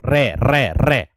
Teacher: रे का उच्चारण करोगे तो आपकी जो जीभ की नोक है वो कंपन कर रही होगी। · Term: लुंठित व्यंजन